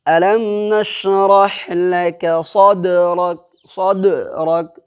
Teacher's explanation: یہاں پر دال ساکن ہے تو دال ساکن قطب جدن کے اندر میں آتا ہے، یعنی لاسٹ میں جو دال ہے وہ دال حرف قلقلہ میں سے ہے. تو یہاں پر بھی آپ کو قلقلہ کرنا ہے، یعنی اپنے مخرج سے ٹکر کھا کر کے الگ کرنا ہے